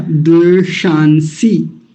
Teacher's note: एक मूर्धन्य शकार आया और एक दंतीय सकार आया